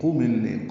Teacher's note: قاف پر پڑھیں گے اور جلدی پڑھیں گے معروف طریقے سے، میم کو لام سے ملانا ادغام شمسی ہے ، الف نہیں پڑھا جائے گا، قم اللیل، لئی یا لین